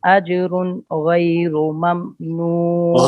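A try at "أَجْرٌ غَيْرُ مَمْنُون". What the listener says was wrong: गैरो रा पुर है, अजरुन की रा भी पुर है। रोजाना आगे से हदर जो पढ़ना होता है ना, उसको देख कर आया करें हरूफ को, कहाँ कहाँ मैंने रा पुर करनी है, कहाँ बारीक करनी है।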